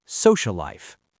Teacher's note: For social life, you don't say two L's. You make one long L. · You stop the air for the first consonant, hold it, and then release it into the second word. For social life, you don't say 2 L's, you make 1 long L. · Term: gemination